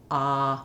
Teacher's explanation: My tongue is all the way down, my lips have no rounding, and as this is a back vowel, I have space all throughout my mouth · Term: open, unrounded ah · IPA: /ɑ/